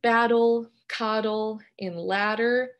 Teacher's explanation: The place of articulation for the tap consonant is alveolar, just like ta and da.